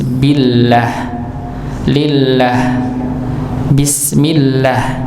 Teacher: Jadi kalau ada lafaz Allah Subhanahu wa taala dan sebelumnya kita dapati hurufnya itu berharakat fathah atau dhammah, maka dibaca tebal. Kalau misalnya sebelum lafaz Allah itu kasrah, maka dibaca tipis.